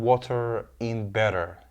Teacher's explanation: So what they have here for Americans is T. What they pronounce is exactly the flapped T here, which sounds exactly like a R sound here.